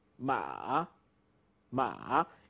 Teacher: You first have a falling part and then a rising part.